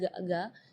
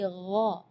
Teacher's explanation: Di ayat ini yang pertama di makhraj huruf ghain ya, ghairil maghdubi ya, perlu diperhatikan bukan G, bukan huruf G ya, bukan ga, tapi gha. Jadi kalau ga itu dia makhrajnya dari lidah. Ya, tapi kalau huruf ghain itu dari bagian tenggorokan ya